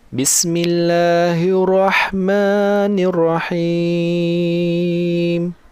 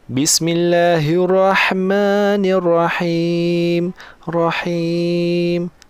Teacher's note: Saya tebalkan ha, saya nipiskan bunyi rah.